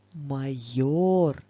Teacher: цьому слові покличемо його майор на який звук паде наголос так довше ми промовляємо звук о тож це наголошений звук